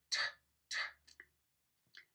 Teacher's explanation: We talked about this last time with voice onset time, where you introduce a puff of air after your stop release. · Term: aspiration